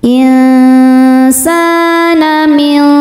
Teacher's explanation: cara bacanya nun disamarkan menuju shad disertai dengungan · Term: ikhfa hakiki ausat